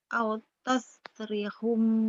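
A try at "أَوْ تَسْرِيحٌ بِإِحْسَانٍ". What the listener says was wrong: Rinya panjang.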